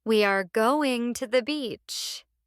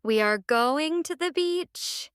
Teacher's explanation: stress going and beach.